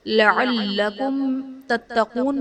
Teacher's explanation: لعلکم تتقون میں میم ساکن کے بعد حرف با اور میم کے علاوہ تا ہے تو یہاں پر اظہار شفوی کا قاعدہ ہوگا، یعنی میم ساکن میں ہم غنہ نہیں کریں گے۔